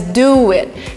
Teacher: we kind of have this extra letter between the two words, W, and it's pronounced as you do it. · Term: intrusion